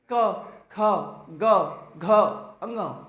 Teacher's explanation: सबके सब क वर्ग को हम केवल कंठ से बोल सकते हैं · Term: कंठ वर्ण